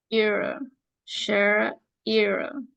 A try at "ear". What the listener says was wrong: Usted está haciendo solo un sonido. No es chair, es chair,